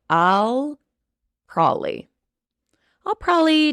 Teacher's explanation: probably very commonly becomes prolly p r o l l y I even write this word